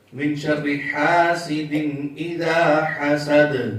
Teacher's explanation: دال آخر میں ساکن ہوئی تو قلقلہ کی آواز خوب ظاہر۔ جب یہ ساکن ہوں گے یعنی ان کے اوپر جزم ہوگی، سکون ہوگی، تو یہ خوب ظاہر ان میں قلقلہ ہوگا، یعنی صاف واضح ہوگا اور حرکت پیدا ہوگی، جنبش پیدا ہوگی اور یہ خوب ظاہر ہوں گے۔